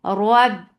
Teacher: with ba, there is shidda, the sound will cut off